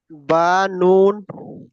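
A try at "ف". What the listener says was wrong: এটা নুন নয়, দেখেন এটা গোটা অক্ষরে একটা ফা। এই ফাটা এই।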